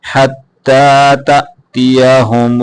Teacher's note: یہ حمزہ ہے حمزے کو جھٹکے کے ساتھ پڑھتے ہیں